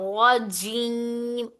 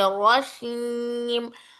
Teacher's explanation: इसी तरह हर्फ जीम पर जहर ना दे तो जीम शीन में बदल सकता है। जीम और शीन भी एक ही जगह से जबान के दरमियानी हिस्से से जबान का दरमियानी और तालू के दरमियानी हिस्सा दोनों टच होकर हर्फ जीम और शीन अदा होता है।